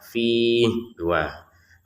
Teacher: Untuk fiih ini kita bisa panjang 2 harokat. Fiih 2. Atau 4 harokat.